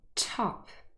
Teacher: T with an elevated H, and that means that the T is aspirated